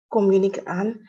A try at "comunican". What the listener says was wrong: It's more like a stress on the I.